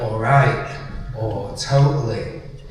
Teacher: in Leodensian or like Leedsite language, it's like when we miss out the T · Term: glottal stop